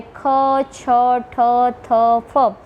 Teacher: જે વ્યંજનોના ઉચ્ચારણ હવાના વધુ પ્રમાણથી થતો હોય તેને મહાપ્રાણ સ્પર્શ વ્યંજન, અને જે વ્યંજનોના ઉચ્ચારણ વખતે હવા ઓછા પ્રમાણથી થાય છે તેને અલ્પપ્રાણ.